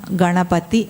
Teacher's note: గణపతి అన్నప్పుడు అది ఏ స్థానం? మూర్ధన్య స్థానం, పైకి తగులుతోంది